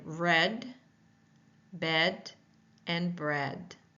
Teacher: The tongue is mid-front, the mouth is laxed. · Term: short E sound